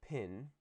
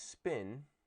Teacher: word initial stress syllables are aspirated so what we do is we produce pin like this and we produce spin without aspiration